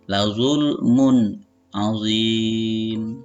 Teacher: Dalam hal ini huruf halqnya adalah ain, jadi harus dibaca izhar atau jelas. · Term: izhar halqi